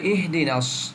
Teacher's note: করছি আজকে পাঁচ নম্বর আয়াত শুরু কর শব্দটা হল ইহদিনাস হামস হা যখন সাকিন থাকব তখন একটু হালকা বাতাস চালু থাকব